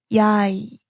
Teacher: Yay is made by combining ya and e. Start with ya and slide to e.